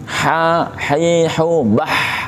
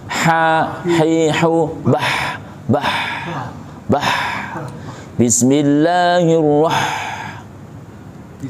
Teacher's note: Jadi yang harus dibenarkan ini huruf ha. Ha tengah tenggorokan. Wastul halqi, tengah tenggorokan. Maka seperti mencekik.